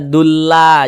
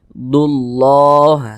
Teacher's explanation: ada lafaz Allah sebelumnya ada huruf yang memiliki tanda baca domah maka lafaz Allah dibaca tebal · Lafaz Allah sebelumnya ada tanda baca dhammah, maka lafaz Allah dibaca tafkhim, baca tebal, sehingga dibaca yuqridullah, dullah, jangan dibaca dulla, jangan, tapi dibaca dullah.